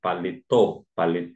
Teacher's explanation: a sílaba tônica recai na última sílaba significa dizer que ela é uma oxítona